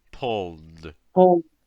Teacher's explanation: English will have those voiced final sounds where your throat vibrates